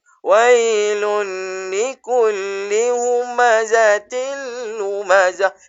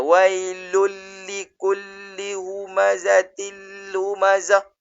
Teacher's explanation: Sebab kesemuanya tidak ada dengung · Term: idgham bila ghunah